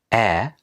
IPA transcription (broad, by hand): æ